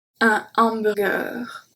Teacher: We say exactly like the English way, just we do not pronounce the H.